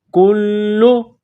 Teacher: کو باریک کرنا ہے، کاف کو لام کے ساتھ ملانا ہے، لام مشدد ہے تو لام میں سختی کرنی ہے